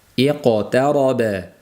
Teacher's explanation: Qofning qalqalasi yo'g'on bo'lishiga e'tibor beramiz, chunki i ingichka bo'lganligi uchun iqtaroba bo'lib qolish ehtimoli bor. Iq kasrada labimiz yoyilgancha qolib ketib qoladi.